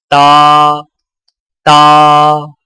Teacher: تا کی ادائیگی میں زبان کی نوک کو سامنے والے اوپر کے 2 دانتوں کی جڑ سے لگا کر باریک آواز میں پڑھیں، یعنی تا تا۔